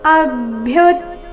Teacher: ಅ ಮೇಲೆ ಆಘಾತ ಭ್ಯು ಯು ಮೇಲೆ ಆಘಾತ ಬರಬೇಕು